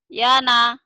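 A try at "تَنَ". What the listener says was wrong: Terbalik. Kalau di atas itu tak, di bawah itu ya. Sama aja nih. Titik satu di atas nun, di bawah ba. Ini seringkali bukan hanya ibu, orang-orang seringkali ketukar.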